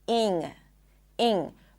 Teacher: some people might pronounce the I sound a little higher, so it's going to sound closer to an E